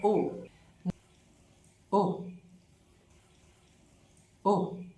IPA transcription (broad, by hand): ʊ